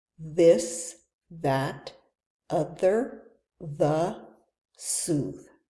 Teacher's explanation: You should feel your tongue vibrate a little bit and you hear a hum.